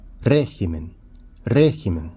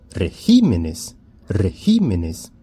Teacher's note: Então, mudou a sílaba tônica do singular para o plural.